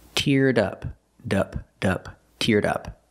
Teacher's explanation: Link the D sound, teared, to the next sound, in up. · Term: link The Sounds, Link the sounds